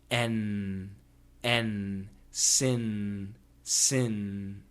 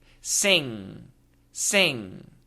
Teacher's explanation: when you make the NG sound all the contact all the touching happens in the back of the mouth the tip of the tongue does not need to touch anything